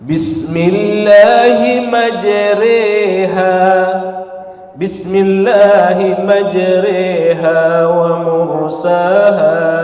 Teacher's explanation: Ada imalah, imalah itu berharokat fathah tetapi bacanya dimiringkan ke kasrah